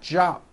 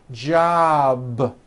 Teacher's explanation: Keep the voicing going throughout the whole word. Job with a voiced B ending.